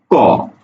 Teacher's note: আটকে যাওয়ার পরে যখন তুমি ছেড়ে দাও তখনই উচ্চারণ হয় ক। তুমি লক্ষ্য করে দেখো, একেবারে গোড়াতে জিহ্বার গোড়াটা প্রথমে আটকে যাচ্ছে, বাতাসকে আটকে দিচ্ছে।